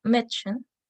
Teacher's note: Entre sus principales funciones se encuentra marcar el plural en los sustantivos, como por ejemplo estas 3 palabras, donde la primera es pronunciada como Mädchen, donde la A tiene un sonido de E abierta